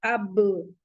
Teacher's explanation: तो जब हम अब बोल रहे हैं तो दोनों होठों की तरी से हमारा अब निकल रहा है, हमारे लिप्स जो हैं उसी जगह स्टॉप हो जा रहे हैं, उसी जगह आवाज रुक जा रही है।